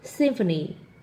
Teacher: you've got the M sound followed by an F sound